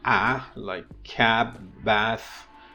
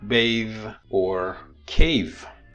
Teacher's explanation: you have simple vowels like a, like cab, bath, and you have complex vowels like bathe or cave. As you can see here, these two vowels, this is a complex vowel which consists of two vowels.